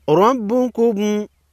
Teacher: را پر زبر ہے، را کو موٹا پڑھیں گے۔